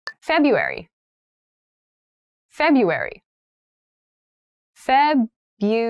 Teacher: that first R isn't really pronounced